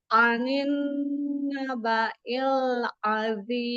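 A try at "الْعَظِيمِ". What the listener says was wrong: Anin naba, ada tempo gunnahnya. Anin naba'il azim. Dha-nya juga diangkat. Zim.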